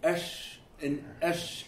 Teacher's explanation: Sheen is all happening in the middle of your mouth